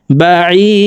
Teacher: দাল যেহেতু কলকলার হরফ উপরের দিকে ধাবিত করে সাকিন করতে হবে